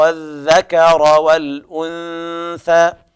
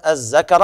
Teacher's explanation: لابد من إخراج طرف اللسان في الذال. أما من يقرأ الذكر هكذا هذا يحول حرف الذال إلى زاي يعني منقوطة اللي هي أخت الراء، هذا لحن جلي لا يجوز ولا يصح في التلاوة.